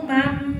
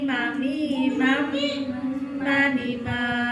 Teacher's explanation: ada sedikit guna, ada sedikit suara dari hidung, dari rongga hidung al-faisum ya, karena tadi mengucapkan huruf mim itu dari suaranya dari al-faisum ya, baik mim itu tasdid maupun mim itu sendiri ya.